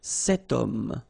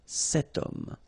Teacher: h is not pronounced, okay, so you've got the sound of o at the beginning of this word